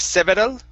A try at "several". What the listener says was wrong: Instead of rolling that R, okay, push the tongue down.